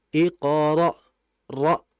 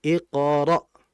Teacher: Kemudian berikutnya di situ ada hamzah sukun, iqra, ra. Nah, hamzah ini memiliki sifat namanya syiddah. Syiddah itu rem mendadak.